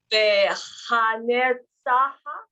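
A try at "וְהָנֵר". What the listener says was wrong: Nay, you have to hear that A.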